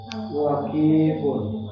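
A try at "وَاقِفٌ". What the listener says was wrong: waqifun waqifun waqifun waqifun wa-nya panjang Pak. Ki-nya nggak panjang. Waqifun.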